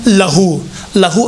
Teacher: تو یہاں پر اشباع کے نتیجے میں ایک واو پیدا ہوتا ہے اور وہ واو لہو کے نیچے بعض قرآنوں میں لکھا ہوا ہوگا.